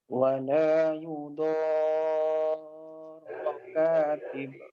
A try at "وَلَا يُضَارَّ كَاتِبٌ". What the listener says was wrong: Coba ditekan lagi ro-nya dan ba-nya dipantulkan.